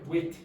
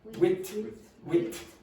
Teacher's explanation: it's a T with aspiration